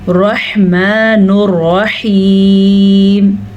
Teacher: रॉ को पुर पढ़ना है क्योंकि दोनों रॉ पे ज़बर है